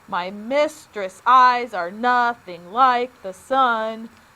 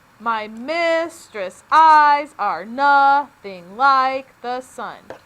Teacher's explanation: they alternate between unstressed and stressed syllables · Notice I put the stress on the second syllable in each of those little iambs